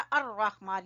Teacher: लाम नहीं पढ़ा जा रहा, अर्रहमान या हमजातुल वसल को इस्तेमाल किया गया। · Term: हरूफ शमसी